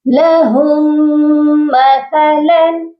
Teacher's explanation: جب بھی ساکن اور مشدد حرف اکٹھے آتے ہیں تو ہم ساکن حرف کو چھوڑ دیتے ہیں۔ یہاں پر ہم نے ہا کو میم مشدد کے ساتھ ملانا ہے اور غنہ بھی کرنا ہے۔ لہم مثلا، مثلا کی جو تنوین ہے یہاں پر صرف اظہار حلقی ہوگا، کیونکہ آگے حمزہ آ گیا ہے جو کہ حروف حلقی ہے۔